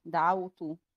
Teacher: الواو حرف لين، فعند الوصل هتنطق ساكنة عادي دعوت، وعند الوقف هيبقى مد عارض للسكون